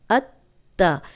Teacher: مضبوطی اور جماؤ سے پڑھنا ہے، ذرا رک کے پڑھنا ہے تاکہ دونوں حروف جو ہیں ان کا دونوں تا جو ہے ان کا حق ادا ہو جائے